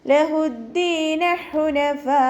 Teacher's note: ഹു തൊണ്ടയുടെ മധ്യഭാഗം വസത്തുൽ ഹൽക്കിൽ നിന്നാണ് വരുന്നത്. അതിൻ്റെ സൗണ്ട് ക്ലിയർ ആക്കുക. · ഒരേ വേർഡിലായിട്ടാണ് കേട്ടോ വന്നിട്ടുള്ളത്. മദ്ദക്ഷരവും ഹംസയും ഒരേ വേർഡിൽ വന്നു. അപ്പോൾ നമ്മൾ 4ഓ 5ഓ കൗണ്ട് നീട്ടിക്കൊടുക്കണം കേട്ടോ. മദ് വാജിബ് മുത്തസിലാണ്. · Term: മദ് വാജിബ് മുത്തസിൽ